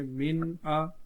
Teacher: نون ساکن میں ہم غنہ نہیں کریں گے اور اس کو سمپل ہی پڑھیں گے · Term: اظہار